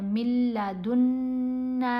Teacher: نون کے اوپر غنہ بھی کریں گے، نون کو 3 الف جتنا لمبا بھی کیا